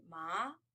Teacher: Second one, you have a rising one, ma.